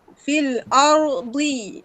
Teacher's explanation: tepi lidah sentuh gigi geraham.